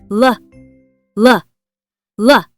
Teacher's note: Tongue touches right behind the teeth like this. L- V.